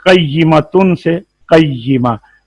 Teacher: جب ہم نے کسی ایک عورت کی طرف اس کا معنی لینا ہونا، تو پھر ہم واحد اس کے آخر میں وہ آتی ہے، اسے کہتے ہیں واحد مؤنث کے آخر میں آتی ہے یہ گول تا. حالت وقف میں یہ تا ہائے ساکنہ سے بدل جاتی ہے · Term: ہائے تانیث